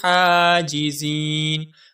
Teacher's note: حاجزین میں جو ہا ہے یہ باریک ہا ہے، حلق سے آواز آئے گی اور ہا کے اوپر کھڑی زبر ہے، اس ہا کو ہم ایک الف کے برابر کھینچ کر پڑھیں گے